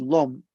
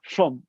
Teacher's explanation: with a voiceless l at the beginning of it